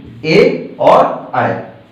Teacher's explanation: तो आ और ई मिले, आ और ई मिलने से ए बना, यानी कि कंठ से बोला जाता था आ, तो इसमें कंठ का भी प्रयोग होगा, और ई बोला जाता है तालु से, इसका मतलब इसमें तालु ही प्रयोग होगी, तो ए और अय ये कंठ प्लस तालु दोनों से बोले जाते हैं